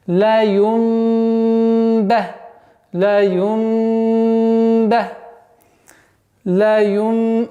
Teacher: вместо нуна произносили звук мим